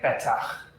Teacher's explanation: We have two short vowels, so you accent the first syllable.